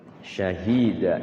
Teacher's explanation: Namanya izhar syafawi. Jelas, enggak boleh mimnya didengungin.